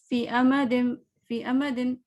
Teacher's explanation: فی اچھا سا 2 حرکت کرنا ہے، ہم یا مس کر جاتے ہیں جب ہم نیکسٹ لیٹر پڑھنا ہوتا ہے نا اکثر